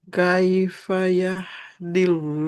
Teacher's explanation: enggak usah ditebalkan karena huruf sebelumnya kasrah jadi lamnya tipis aja